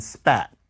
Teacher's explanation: We don't usually say it in isolation, but there's the P that's in spat. Spat doesn't have a puff. So there's puffy P and puffless P.